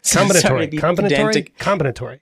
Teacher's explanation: the emphasis is on the first syllable